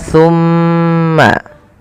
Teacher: Kemudian pada lafal atau tumma Itu ada bacaan namanya gunah yaitu suara mimnya ditahan sepanjang dua harakat baru alirkan